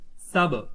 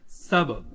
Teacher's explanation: سبحا طویلا، یہ با حرف کلکلہ ہے، اس میں کلکلہ کو خوب ظاہر کر کے پڑھیں گے، آواز گونجتی ہوئی ہوگی